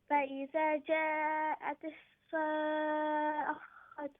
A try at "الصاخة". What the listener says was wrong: See, you're reading the same thing. Sa'akhatu. Where is the ah? I can't see the sound of ah. You made the same mistake as Hashi. You're saying sa'akhatu. Where is the ah?